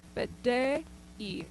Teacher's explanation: careful that you're not adding a y sound in between de-y, but de-y. Again, two distinct vowels.